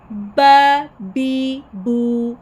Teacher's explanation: बा में होठों को बंद करें, फिर एकदम से अचानक से खुलेंगे, जैसे फटने की आवाज़ होती है हल्की सी, इस तरह से अदा करेंगे। बा ज़बर बा ज़ेर बी, बा पेश बू, बा बी बू।